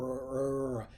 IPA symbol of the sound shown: r